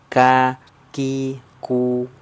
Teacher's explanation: Kalau kaf dia sedikit ke depan. Ya, sedikit ke depan daripada huruf qaf, menyentuhnya ke langit-langit lunak dan keras.